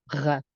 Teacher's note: R, this one is a little tougher to say because it's a throatal sound, and the closest we can get by pronouncing the sound is the throatal French R